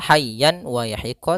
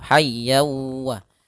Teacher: hukum tajwid berupa amunah yaitu adanya tanwin an bertemu huruf w tanwinnya masuk kepada huruf wau sehingga bukan lagi dibaca Han ya hayyan waahiqqo tapi masuk hayyawwa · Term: idgham bi gunnah